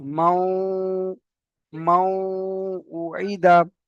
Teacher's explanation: এই নুন সাকিনের জন্য এখানে একালি পরিমাণ গুণনা করতে হবে।